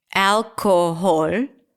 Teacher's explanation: Now, the al is the primary stress.